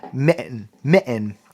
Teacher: A lot of times the T isn't said with the tongue.